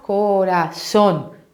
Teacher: Ah, tá forte essa última sílaba, hein? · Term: sílaba forte